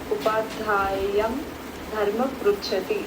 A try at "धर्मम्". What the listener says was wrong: धर्मम, धर्मम वहाँ पे अनुस्वार है, मे be it is not clear but it is there. धर्मम पृच्छति।